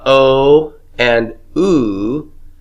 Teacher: what are we doing we're rounding our lips for those aren't we